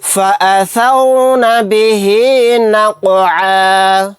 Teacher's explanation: آیت کرنے کی صورت میں عین الف کے ساتھ ایک زبر کو پڑھیں گے، 2 زبر نہیں پڑھے جائیں گے